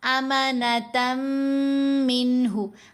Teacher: تا کو میم سے ملاتے ہوئے یہاں ادغام ہو رہا ہے